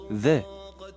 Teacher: произносим «з», только при этом язык держим между зубами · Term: заль